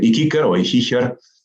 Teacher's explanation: la adaptación de la oclusiva velar sorda latina K es en Amazigh también una oclusiva velar sorda. Por ejemplo, kiker en Amazigh da actualmente ikiker o ikiker, kera, takira, merkedem, merkidu, filike, el helecho, ifilku, etc.